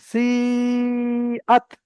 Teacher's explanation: সি টান হবে তিন আলিফ আর আত এখানে কোন টান নেই